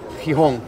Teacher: la G delante de una E o una I tiene un sonido fricativo velar sordo